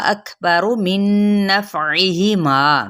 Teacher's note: काफ पे हम्स करेंगे